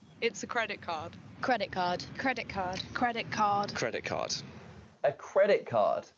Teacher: in fluent speech when one word ends in a vowel sound followed by a t and the next word begins with a k sound that changes to a k so credit card becomes credit card it's an example of assimilation